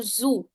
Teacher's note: It's a buzzing sound.